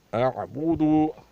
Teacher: دیکھیں حمزے کو ہم سخت ادا کر رہے ہیں اور عین کو نرمی سے ادا کر رہے ہیں۔ اعبودو، اس کو اس طرح نہیں پڑھتے، اعبودو نہیں پڑھنا ہے کیونکہ عین سختی سے ادا نہیں ہوتا۔